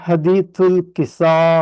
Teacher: قصہ کے الف میں مد ہے تو اس کو پل کرتے ہیں اوپر، اس کے بعد حمزہ ہے اس کو پڑھتے ہیں، اس پر زبر ہے فتح اس کو نہیں پڑھتے، تو حمزہ پہ رک جاتا ہے انشاءاللہ۔